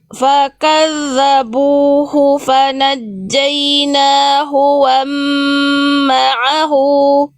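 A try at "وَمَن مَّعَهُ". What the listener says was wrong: Bukan wa ma'ahu, wa mam ada mim dulu di awal. Wa mam.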